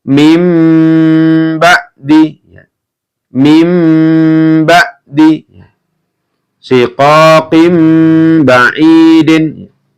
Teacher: Nun sukun atau tanwin bertemu dengan ba, maka dibaca bunyi n berubah menjadi m. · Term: iklab